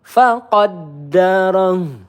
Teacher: Dalnya ditekan terlebih dahulu ada tasdid ya.